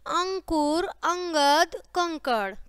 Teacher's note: होती है बिंदु अंक की बिंदी जिसे बोलते हैं ठीक है यह स्वर के बाद आने वाला व्यंजन है जिसकी ध्वनि नाक से निकलती है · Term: अनुस्वार